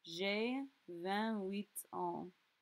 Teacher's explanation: Note that my 8 and my ans form a liaison.